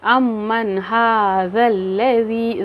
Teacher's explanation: ज़ाल के मखारिज देखें, इसका ज़बान को थोड़ा सा बाहर की तरफ निकालना होगा।